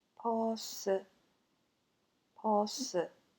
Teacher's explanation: We only have an S in the end, so you have to put a vowel, which is ㅡ in this case.